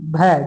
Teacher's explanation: जो भ है यह आपका महाप्राण व्यंजन है